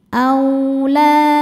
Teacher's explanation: Cara bacanya huruf lam panjang 2 harokat. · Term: mad tabi'i dhahiri